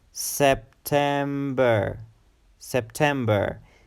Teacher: it's a three syllable word September September and the emphasis is on the second syllable